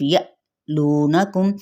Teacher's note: حمزہ ساکنہ پہ جھٹکا دیا جائے گا